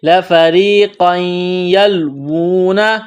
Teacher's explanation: قاف کے اوپر دو زبر تنوین ہے، تنوین کے بعد یا ہے، یا کے اوپر تشدید ہے، تو قاف کو یا کے ساتھ ملانا ہے، غنہ کریں گے۔